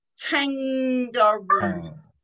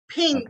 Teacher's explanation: The back of my tongue is touching the roof of my mouth.